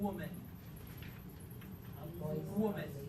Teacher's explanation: a voiced bilabial glide